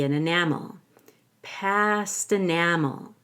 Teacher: take the T in past and change it to a fast D to link it to the vowel